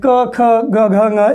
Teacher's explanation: इनके उच्चारण में आप देखेंगे कि जो अंग, जो अवयव उच्चारण करने में हमारी मदद करते हैं वे कहीं न कहीं स्पर्श कर रहे हैं। क ख ग घ ङ में जिह्वा कंठ को स्पर्श कर रही है।